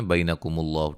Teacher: لفظ اللہ کے لام کو موٹا ادا کریں گے ملانے کی صورت میں بھی، اور یہاں سے ابتدا کرنے کی صورت میں بھی